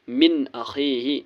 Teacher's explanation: نون ساکن کے بعد حمزہ ہے، حمزہ حرف حلقی ہے اس لیے نون ساکن کو ظاہر کرنا ہے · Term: اظہار